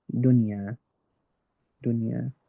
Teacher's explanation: But because it's within the same word, it's not two separate words, then instead I'm going to make it clear and I'm going to pronounce the n component of the noon, but not the ghunna, not the nasal component of the noon. So it altogether goes dunya, dunya. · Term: izhar mutlaq